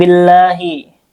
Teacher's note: Allah di sini lafzul jalalah ee dan dibaca dengan tarkik. Ee karena sebelumnya ada ee harakat kasrah yaitu bi alif lamnya ee syamsiyah makanya dibaca dengan idgam billahi langsung ke huruf lam.